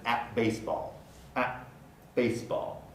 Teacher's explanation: ends with an alveolar stop that's one of the weak segments that is subject to place assimilation